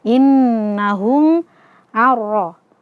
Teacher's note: Nun sukunnya kita idghamkan, kita masukkan kepada huruf ra tanpa disertai gunnah. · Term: idgham bila gunnah